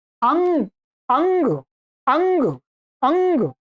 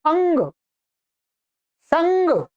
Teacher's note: तो अ और ग के बीच में जो बोला जा रही है ध्वनि वो नासिका से बोली जा रही है। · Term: अनुस्वार